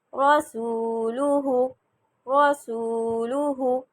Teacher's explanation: رو پہ زبر، سو لمبا، نہ لام لمبا نہ ہا